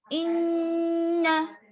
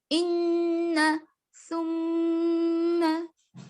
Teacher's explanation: غنہ میں جو ہے نون کی آواز آئے گی لیکن ناک میں گنگناہٹ پیدا کرے گی. یعنی منہ بند رکھیں گے, ناک میں گنگنائیں گے نون کو